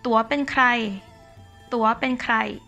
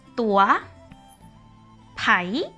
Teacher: in the Northern Thai language they always have like the rising tone or the high tone